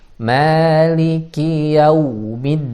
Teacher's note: Dal di pangkal gigi seri atas.